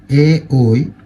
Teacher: এ ঐ এই দুটো উচ্চারণ করার জন্য লাগে কন্ঠ এবং তালু। একে বলা হয় কন্ঠ তালব্য ধ্বনি।